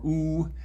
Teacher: You can shift that highest arch a little bit back for oo, and you get a high back vowel because this highest point is further back. For oo, as we know, we also round our lips, so that's a high back rounded vowel.